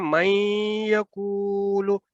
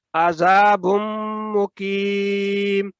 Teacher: ادغام ہو رہا ہے غنہ کے ساتھ